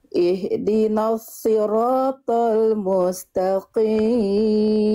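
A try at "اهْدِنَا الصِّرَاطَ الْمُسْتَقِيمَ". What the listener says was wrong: Oke, shotnya tebalkan lagi, mu-nya langsung masuk ke mus, jangan mustaqimu, jangan kepanjangan mu-nya. Jangan isba. Jadi mu isba itu menambahkan sedikit harokat di mustaqimu, enggak, tapi mustaqim. Lalu shotnya angkat lagi pangkal lidahnya, sli.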